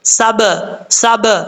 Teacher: سین حروف صفیریہ میں سے ہے، سیٹی کے ساتھ پڑھا جائے گا. سین کے بعد با ہے، با حروف قلقلہ میں سے ہے.